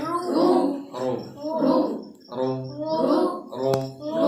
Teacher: মোটা হবে এবং ঠোঁটটা গোল রাখতে হবে